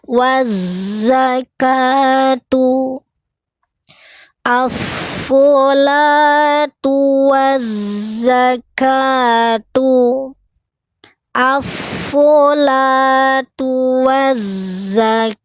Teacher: Dari wa langsung melebur ke zai.